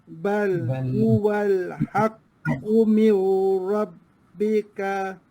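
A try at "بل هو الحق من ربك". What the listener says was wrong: Mir. Nun dah dimasukkan dalam ra. Maksudnya dia lenyap terus nun. Dia tak ada bunyi. Masuk bunyi ra terus.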